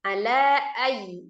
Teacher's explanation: panjangkan dulu lanya 4 sampai 5 harakat Mad jaiz munfasil